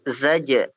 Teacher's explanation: Yang pertama za, yang kedua ja. Zaj. Yang kedua dikolkolahkan. Zaj. Ya, fa inna ma hiya zaj.